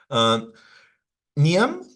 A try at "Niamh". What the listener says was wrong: It's Niamh. Niamh. Niamh. The MH is a V.